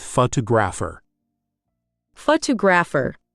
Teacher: feel that second syllable pop out